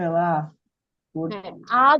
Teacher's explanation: আমরা প্রসারণও বলতে পারি আ তোমরা ধ্বনিটা উচ্চারণ করে দেখো জিম আ যখন বলবা তখন একই সাথে ঠোঁটের অবস্থান হবে বিবৃত